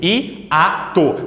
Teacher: O I não é semivogal do A. Eu pronuncio I-A-to. Perceba que o I, ele é forte. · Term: hiato